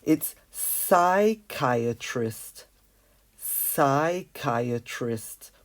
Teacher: psychiatrist does not pronounce the P